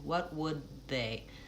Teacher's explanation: What I'm doing there typically is stopping that T in what, I'm not releasing it, I'm saying what would, I'm saying what would, so I'm releasing the T into the W